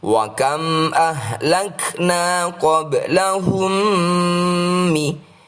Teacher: Mim sukun yang diikuti dengan mim adalah Idgham Mutamathilayn atau Idgham Mimi. Bacalah dengan nasalisasi dua ketukan. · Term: idgham mimmi